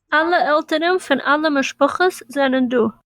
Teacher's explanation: it's not spelled, but we have an extra syllable there. Between R and N, E creeps in.